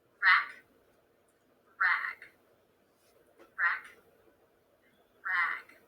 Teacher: the second word is just a little bit longer that's because of the voice consonant at the end